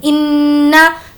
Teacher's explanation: نون پر تشدید ہے اس لیے غنہ کریں گے